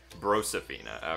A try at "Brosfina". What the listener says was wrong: Brosfina. No reason to add more syllables in there.